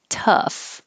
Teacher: this o u g h sounds like uh tough just uh